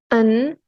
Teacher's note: a velar nasal voice sound